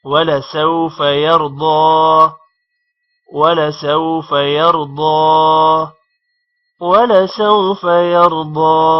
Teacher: یرضا را موٹا ہوگا اور ضاد بھی موٹا ہوگا، ضاد پر کھڑی زبر ہے تھوڑا لمبا بھی کریں گے، ولسوف يرضى ولسوف يرضى ولسوف يرضى۔